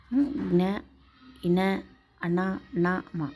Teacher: అనునాసికాలు ముక్కు సహాయంతో పలికేవి